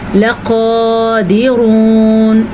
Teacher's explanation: نون کا غنہ ادا کرنا ہے، لقادرون۔ ایک بڑی غلطی جو یہاں پہ کی جاتی ہے، لام زبر لا کو لمبا کر دیا جاتا ہے